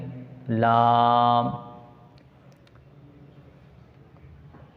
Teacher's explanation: किनारा ज़बान मसवड़े से मिलकर लाम अदा होता है